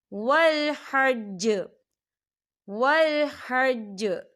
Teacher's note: یہاں دیکھیے چھوٹی سی آپ کو توئی نظر آ رہی ہے، تو یہ وقف مطلق کی علامت ہے، تو یہاں پر ٹھہرنا بہتر ہے. وقف کی صورت میں جیم جو ہے وہ ساکن ہو جائے گا اور یہاں پر قلقلہ ہوگا.